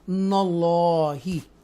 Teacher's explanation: یہ جو لام ہے اس کو تفخیم کے ساتھ پڑھیں گے، بولڈ پڑھیں گے، اسٹرونگ پڑھیں گے، فل ماؤتھ کے ساتھ پڑھیں گے، براڈ وائس کے ساتھ ہم اس کو پڑھیں گے